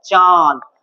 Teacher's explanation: নাক দিয়েও বায়ুটা আসছে আর মুখ দিয়েও না বায়ুটা আসছে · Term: অনুনাসিক স্বর